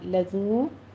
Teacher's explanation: واو مدہ ہے، دونوں ہونٹوں کو گول کرتے ہوئے 2 کاؤنٹ کیجیے